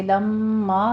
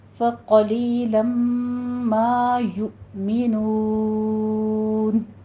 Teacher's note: لما میں ادغام مع الغنہ کریں گے، 2 کاؤنٹ کرنا ہے